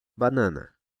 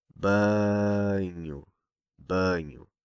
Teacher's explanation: So why is the A sound nasal? It's because it's placed just before a nasal consonant, N.